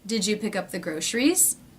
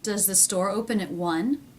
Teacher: Going up in pitch at the end.